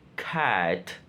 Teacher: a low front vowel